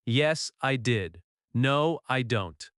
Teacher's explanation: In American English, yes or no answers usually have a falling intonation when you are confident